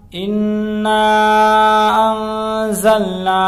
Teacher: نون ساکن کی آواز کو ناک میں چھپا کر پڑھیں گے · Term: اخفا